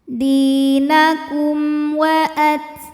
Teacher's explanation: Ada hukum izhar syafawi, karena mim sukun menghadapi huruf selain mim dan ba, yaitu huruf waw, maka mim sukun kita bunyikan dengan izhar jelas